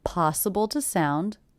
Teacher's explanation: The word to is definitely reduced to the schwa